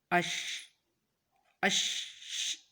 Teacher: یہ جو شی کی آواز آئی ہے نا، جو شین کی آواز آ رہی ہے، اور شین کے لیے جو زبان اوپر تالو کے ساتھ لگائی ہے، یہی اس کا مخرج ہے